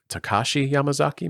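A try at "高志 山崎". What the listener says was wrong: No, Takashi. So when you're pronouncing katakana, or any kind of Japanese words, right? Every I guess like syllable has to have the exact same time wasted on it. So if you drag it out like Takashi, the ka part is like too far. It's Takashi or Takashi Yamazaki. like it's all needs to be like succinct.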